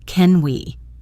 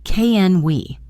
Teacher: can we in a question often becomes a softer, unstressed can we